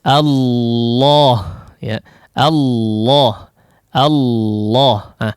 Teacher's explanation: akan lebih jelas ketika huruf lam tersebut ditebalkan Ya seperti pengucapan lafal jalalah misalnya ya allah' awu-awu loh ah dia tidak sepenuhnya menggunakan Sisi Lidah